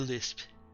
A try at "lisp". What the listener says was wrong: No, it's a lisp. No, you're pronouncing the P. It's a lisp.